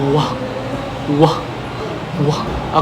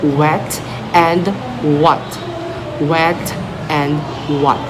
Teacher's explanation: Okay, the presence for a lips rounded and back of the tongue raised like wah, wah, wah. · these sounds are made by the articulators moving toward each other but not quite making contact, creating a smooth gliding sound. Okay, so just like for example the letter W, which is pronounced like wah, wherein we use our bilabial velar. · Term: gliding sounds